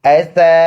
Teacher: حمزہ زبر ا سین الف زبر سا سین سیٹی والا حرف ہے. سیٹی جیسے آواز نکالیں گے